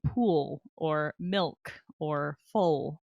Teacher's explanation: the dark L usually happens at the end of a syllable like pool or milk or full